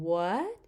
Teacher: your voice has a very high pitch, but you start at a mid level and then go up